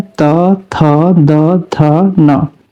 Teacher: दंत से करते हैं त, थ, द, थ, न।